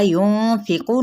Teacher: नून पे इख्फ़ा करेंगे, क़ाफ की पेश को लंबा नहीं करेंगे लेकिन क़ाफ पुर पड़ा जाएगा।